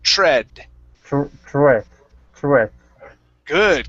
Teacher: again, we have the TR, so we're going to use a CHR at the beginning.